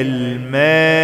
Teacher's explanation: الماء فيها مد واجب متصل أربع حركات